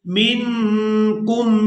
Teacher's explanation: نون ساکن پر اخفا کریں گے یعنی نون کی آواز کو ناک میں چھپا کر ادا کریں گے